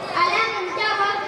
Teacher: মিম সাকিনকে বিনা গুণায় পড়তে হবে এটি ইজহারে হালকি বলে